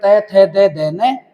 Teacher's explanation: दंते वे वर्ण जिनका उच्चारण करने पर जिह्वा दांतों को स्पर्श करती हो, वो कहलाते हैं दंते वर्ण।